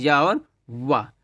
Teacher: मुख द्वार बहुत संकरा हो जाता है और हवा स्वर के समान मध्य से निकल जाती है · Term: अर्धस्वर